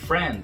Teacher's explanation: Esse D no final não é pronunciado. A língua para atrás do dente antes de sair o som do D.